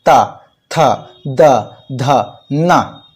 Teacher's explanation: हम क्या करेंगे कि जिस प्रकार हम ता बोलते हैं तो ता बोलने के लिए हमारी जो जीव का अगला हिस्सा है वह दांत से स्पर्श करता है